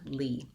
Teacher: I have a tense E and a light L at the end, lee. You may want to build it from the back.